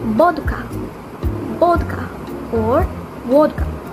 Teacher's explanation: in kanglish the v sound will be substituted by the b sound